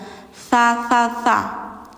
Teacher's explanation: Bacanya tsa lidah ujung gigi atas